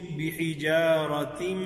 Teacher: جو اس کی نون کی آواز ہے اس کو اور میم کی آواز کو آپس میں ہم نے مکس کر دیا ہے ، تو دونوں کو ذرا آپس میں ملا کے پڑھ رہے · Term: ادغام